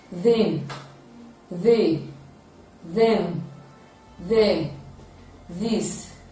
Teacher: it is produced like the other one but this is voiced it is a voiced dental fricative